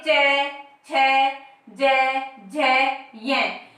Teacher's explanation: तो जब भी इनका हम उच्चारण करते हैं तो हमारी जीभ जो है कहाँ पे स्पर्श करती है? तालु पर स्पर्श करती है।